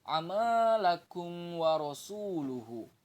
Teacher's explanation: Kalau mim sukun bertemu dengan semua huruf hijaiyah selain mim dan ba, maka bacaannya itu adalah izhar syafawi, dan jelas bacanya itu tanpa disertai dengan dengung